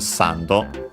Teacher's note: in all cases it's uh accent on the first syllable as expected